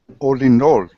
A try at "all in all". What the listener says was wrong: Except you don't say the L's. All in all. There's no L. It looks like an L, but we don't say it with an L. All in.